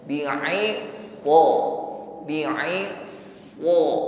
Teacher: Irtifa'u aqsal lisan, terangkat pangkal lisan ke langit-langit mulut ketika mengucapkannya. Ini yang membuat suara shad ini lebih tebal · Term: tafkhim